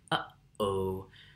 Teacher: the little pop of air that originates in our throats at the beginning of a word like eat or apple, or in the middle of a phrase like uh-oh. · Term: glottal stop